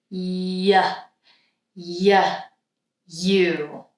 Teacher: So my tongue is lifting up, but it's not touching. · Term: palatal consonant